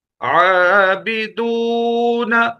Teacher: کھڑا زبر کو بھی اتنا کھینچتے ہیں جتنا ایک الف کو کھینچتے ہیں. بدون، واو مدہ آ گیا.